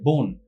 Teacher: একাক্ষর শব্দের প্রথমে অ এবং পরে দন্তন্য থাকলে কোথাও কোথাও সেই অ এর উচ্চারণটা ওকারের মত হয়ে যায়